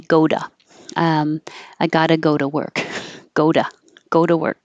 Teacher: The T is between the two vowels for the oo and the o. And so it just changes to a D